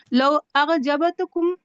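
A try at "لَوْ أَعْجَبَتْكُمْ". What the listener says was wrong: یہ وہ نہیں، الف عین، اعجبتکم، بس الف اور عین جو ہے وہ حلق سے عین کی آواز نکلے گی.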